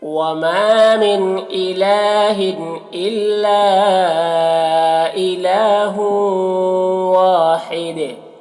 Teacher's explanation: مدہ ایک الف کے برابر کھینچیں گے، اور حید یہاں پر وقف کریں گے تو تنوین سکون سے بدل جائے گا، تو پھر دال میں قلقلہ ہوگا